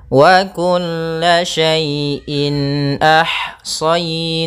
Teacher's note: maka dinamakan dengan izhar halqi sehingga suara tanwinnya harus jelas